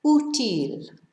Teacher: The accent tells us to stress the first syllable rather than the last syllable, even though it ends in a consonant.